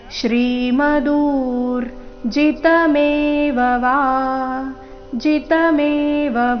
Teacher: ಶ್ರೀ ದೀರ್ಘ ಮಧುರ್ ದು ದೀರ್ಘ ನಂತರ ಅರ್ಧರ ಶ್ರೀಮದೂರ್ ಜಿತಮೇವ ಜಿತಮೇವ ಕೊನೆಗೆ ವ ದೀರ್ಘ ಮುಂದೆ ತತ್ತ ದೇವಾವ ಗಚ್ಚತ್ವಂ ತತ್ತ